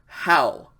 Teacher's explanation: breathing mark over the oopsillon so pronounce the diphthong ow but you pronounce an h in front of it because it's rough breathing